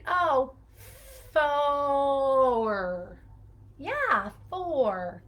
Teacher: sound that is a combination of o so if you say if you pull those vocalic r's apart you can hear the vowel and the er sound together it's just when we say them you're it's really one mouth